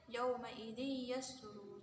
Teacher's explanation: idgham bihuna ini cara membacanya masuk dengan mendengung, hurufnya ada 4 yaitu ya, mim, nun, wawu.